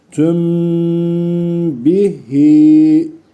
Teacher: Burada da cezimli mimden sonra B harfi geldiği için dudak ihvası oluyor. Arayı kesmiyoruz. Sesi genzimize veriyoruz.